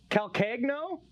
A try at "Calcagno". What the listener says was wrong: I think the G is silent.